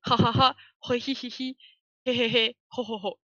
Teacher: le H est prononcé. Il est aspiré, en japonais